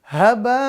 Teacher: maka bunyi n-nya di nun sukun ini dibalik diganti dengan bunyi mim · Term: iqlab